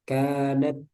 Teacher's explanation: kanat jangan mantul tapi keluar udara